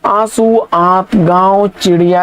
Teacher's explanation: तो अनुनासिक में के उच्चारण में नाक से बहुत कम सांस निकलती है और मुंह से अधिक